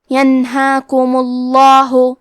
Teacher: لفظ الجلالہ کے لام کا حکم ہے تفخیم تو ہم حرف اللام کو موٹی آواز میں پڑھیں گے